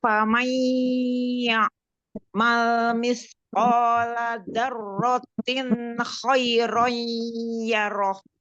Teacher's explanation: nun sukun bertemu dengan ya bertasjid, idgham biguna, melebur, didengungkan